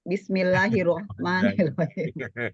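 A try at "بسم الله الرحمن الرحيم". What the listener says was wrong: Ibu kayak Mak Erot aja dipanjangin. Yang panjang sama kita yang panjang baca panjang, yang pendek baca pendek, jangan dipanjangin atau dipendekin.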